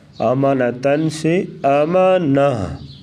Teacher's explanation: تاہم اگر گول تا آخر میں ہوگی، یہ دیکھو کلمے کے آخر میں گول تا آ گئی ہے تو اسے ہا ساکنہ سے بدل کر وقف کیا جائے گا